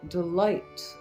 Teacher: an unstressed syllable followed by a stressed syllable, a short syllable followed by a long syllable. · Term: iambic pentameter